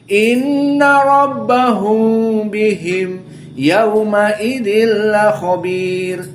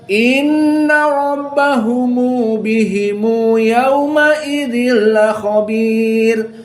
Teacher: karena Abu Ja'far dan juga Ibnu Katsir dari kelompok Arab yang tidak mampu untuk membaca sukun, maka dijadikan dhammah. Maka dibaca inna rabbahumu bihimu yauma idzil khabir.